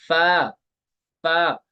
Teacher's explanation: फा का मखर होता है ऊपर वाले दांतो के किनारे निचले होट के तर हिस्से से अदा होता है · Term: फा का मखरज